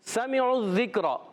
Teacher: سمعوا الذکر سین سیٹی کے ساتھ ادا ہوگا, سین پر زبر, میم کے نیچے زیر, عین کی پیش ڈائریکٹ زال سے مل جائے گی.